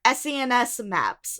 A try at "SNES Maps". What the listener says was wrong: SNES Maps. You said SENES Maps.